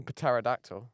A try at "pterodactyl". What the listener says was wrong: Why do you say the p? pterodactyl. The p is silent.